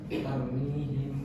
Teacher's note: suara mim dibaca samar-samar. antara jelas dan dengung disertai dengung atau gunah di sekitar dua harakat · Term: Ikhfa syafawi